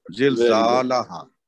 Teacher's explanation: ہا کا بھی الف مد ہے، اس کو دو اور دے کے پڑھیں گے